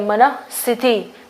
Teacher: तो विसर्ग को जो इसी तरीके से पढ़ा जाता है यहाँ पे। तो मन आएगा पहले और उसके बाद विसर्ग, यानी जिसको हम ह प्रोनाउंस कर रहे हैं, और उसके बाद जो है वो स्थिति